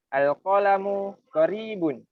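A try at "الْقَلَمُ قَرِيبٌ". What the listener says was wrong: Boleh lah, boleh.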